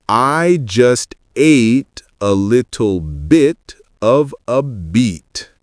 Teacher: Short and relaxed for bit, long and tense for beat.